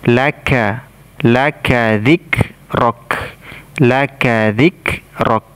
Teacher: Makhrajnya atau tempat keluarnya suara dari pangkal lidah kita naik menempel langit-langit lunak bagian atas, ya, langit-langit lunak dan keras sekaligus. Ya, makhrajnya huruf kaf ini dari pangkal lidah naik menempel langit-langit lunak dan keras sekaligus